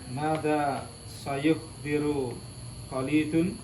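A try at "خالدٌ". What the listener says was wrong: Khalidun, panjang kod.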